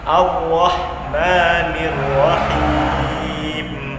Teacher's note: perhatikan huruf ro-nya, tidak boleh dari satu kali getarannya. Kemudian huruf h-nya itu di sini adalah huruf h yang tipis. Jadi harus ada kedengaran sedikit anginnya. Ar-Rahmanir-Rahim.